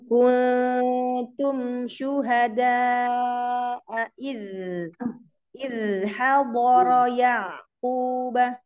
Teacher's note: Huruf zal dialirkan rokhawahnya.